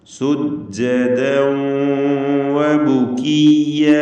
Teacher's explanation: ദാലിൻ്റെ തൻവീൻ വാവിലേക്ക് ലയിപ്പിച്ച് മണിക്കണം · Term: ഇദ്ഗാം ബിഗുന്ന നാഖിസ്